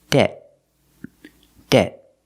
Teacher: when we pronounce the T it's after a vowel phonetically so we make a stop te debt debt we don't say debt usually we don't release